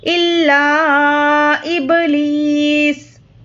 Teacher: سین پر جزم دے کر سانس توڑیں گے۔